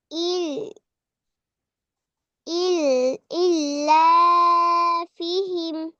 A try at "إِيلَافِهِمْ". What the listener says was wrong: জেরের বামে জজমালা ইয়া, তাহলে এখানে এক আলিফ টান দাও। ইলাফিহিম। এই তো মাশাআল্লাহ, কিন্তু এখানে আসলে একটা মাদ আছে, বুঝছো?